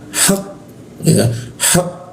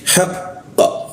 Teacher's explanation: kita baca dulu tasdidnya, kita tahan hak ya, hak, baru setelah itu kita pantulkan. Jadi bacanya haqqa, seperti itu, haqqa.